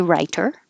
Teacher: americans change the t to a d so you could say writer no problem